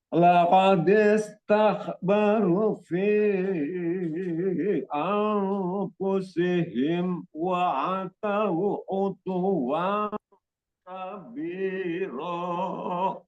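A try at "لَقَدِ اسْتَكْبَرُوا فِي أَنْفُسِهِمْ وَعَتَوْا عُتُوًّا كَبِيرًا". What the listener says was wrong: Di barunya itu kurang sedikit Pak, itu ada matobi'i ya. Laqad istakbaru fi anfusihim wa atau utuwan kabiro.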